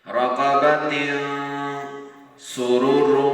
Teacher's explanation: نون ساکن میں نون کی آواز کو ایک الف کے برابر اپنے ناک میں لے کر جاتے ہیں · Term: غنہ